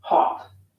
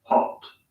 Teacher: the American O sound is an unrounded vowel, ah, while the British O sound is rounded, aw.